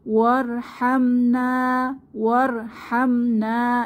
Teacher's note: এখানে র মোটা হবে, র সাকিনের আগে ওয়াও এর উপরে জবর এসেছে , তাহলে র সাকিনের আগে জবর পেশ হলে র মোটা হয়,